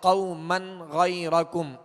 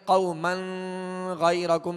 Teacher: واضح ہو رہی آواز کہ قوما غیرکم, یہ اظہار ہے, اور اگر یہاں غنہ کریں گے قوما غیرکم تو یہ اظہار نہ ہوا